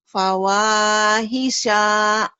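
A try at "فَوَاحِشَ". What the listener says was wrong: Pendek. Fawahisha.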